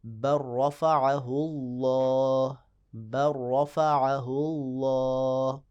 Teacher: لام کو را کی جنس میں تبدیل کر کے را کا را میں ادغام کر دیں گے، اور لام بالکل بولنے میں ختم ہوگا، لکھا تو جائے گا، بل رفعہ اللہ، بل رفعہ اللہ، تو یہ اس کی مثالیں ہیں۔ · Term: ادغام متقاربین